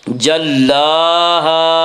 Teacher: الف مدہ کو ایک الف کے برابر کھینچ کر پڑھیں گے۔ اذا جلاها لام کے اوپر کھڑا زبر ہے، کھڑا زبر کو ایک الف کے برابر کھینچ کر پڑھیں گے۔